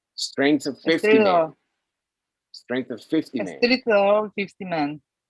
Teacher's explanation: Y no me vas a abrir mucho esa of. No me la vas a abrir mucho. Se va a cerrar a una schwa.